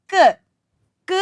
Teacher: എന്ന് പറയുന്ന ക എഴുതി ചന്ദ്രക്കല ഇടുമ്പോൾ നമ്മൾ അതിനെ ക് എന്ന് വായിക്കും ക് എന്ന് വായിക്കുമ്പോൾ തുറന്നൊരു ഉച്ചാരണം അതിനുണ്ടോ ഇല്ല പകുതി ഉച്ചാരണമേ ഉള്ളൂ അല്ലെ തുറന്ന പൂർണമായ ഒരു ഉച്ചാരണം ഇല്ല അതുകൊണ്ട് ഇതിനെ നമുക്ക് വർണ്ണം എന്ന്